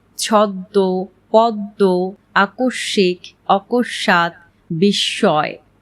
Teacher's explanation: পদের মধ্যে বা অন্তে ম ফলা সংযুক্ত বর্ণের দ্বিত্ব উচ্চারণ হয়ে থাকে এবং সেই সাথে শেষ ধ্বনিটি সাধারণত সামান্য নাসিক্য প্রভাবিত হয়।